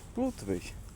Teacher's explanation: Заменяем «ы» на долгую «у». Местами даже «и».